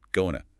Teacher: It happens because going to is usually followed by a verb, and the sounds just blur together in fast speech. The ing sound often softens or drops before the T, and the vowel in to shrinks to almost nothing. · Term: reduction